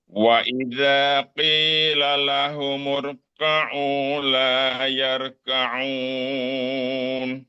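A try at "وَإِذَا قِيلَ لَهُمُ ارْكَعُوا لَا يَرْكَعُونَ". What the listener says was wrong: Oke, tinggal disempurnakan. Tembalkan rnya mur murka. Angkat belakang.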